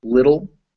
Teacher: That T is also pronounced like a D. So whenever you see a T or a D right in front of an L, the word ends TL or DL, it's pronounced dull.